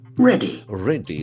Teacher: The accent falls on the first syllable ready.